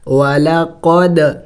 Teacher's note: دال حروف قلقلہ میں سے ہے، ساکن ہے تو قلقلہ کریں گے یعنی ہلا کے پڑھیں گے